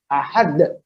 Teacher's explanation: Suara qalqalah itu bi hamzatin sakinatin. Dengan hamzah yang sukun. Wadihatin yang kuat, yang jelas ya, syadidatin yang kuat, majmuratin yang keras, hakada seperti ini, ahad. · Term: khotmu sautil qalqalah